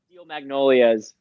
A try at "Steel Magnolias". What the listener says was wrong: A plural. Steel Magnolias.